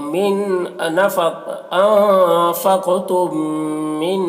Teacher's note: انفقتم، یہاں پر دیکھیے میم ساکن کے بعد میم ہے تو میم کو میم سے ملا کر پڑھیں گے، اس کو ادغام شفوی کہتے ہیں ، میم سے ملا کر غنہ کے ساتھ پڑھتے ہیں، اس